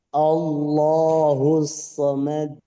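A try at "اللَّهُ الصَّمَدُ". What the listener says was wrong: Kol-kolahnya jangan delay. jangan somad, enggak. Somad. Somad. Jangan somad. Jangan ditahan dulu. Allahus samad.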